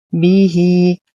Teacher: نتم كسرة الباء والهاء ونصل الهاء بيا مدية صلة صغرى تمد بمقدار حركتين